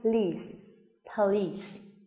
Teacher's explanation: chúng mình phải nói đủ cả hai âm tiết và đồng thời mình sẽ nhấn trọng âm vào trọng âm của nó trong trường hợp này là âm tiết thứ hai